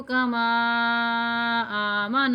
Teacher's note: کاف زبر کا، میم الف مد زبر ما، یہ جو مد آ رہی ہے 2 کھڑے زبروں کے برابر کھینچی جائے گی